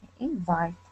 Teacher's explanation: we say invite with the accent at the end of the word